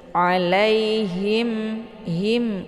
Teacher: berarti hanya itu kurang jelas tapi ditekan sedikit alaihim him karena makarijul huruf H ini H besar ini adalah posisinya di tenggorokan bagian bawah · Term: ha besar